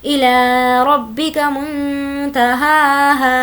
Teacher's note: نون ساکن کی آواز کو ناک میں چھپائیں گے کیونکہ تا حرف اخفا میں سے ہے.